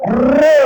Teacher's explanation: र म्हणलं तर तोंडामध्ये व्हायब्रेशन होतं, याचा अर्थ उत्तर आहे र, पर्याय नंबर 2, कंपित वर्ण।